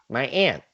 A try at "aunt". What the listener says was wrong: That's a flat A. It's aunt. Yeah, we say aunt.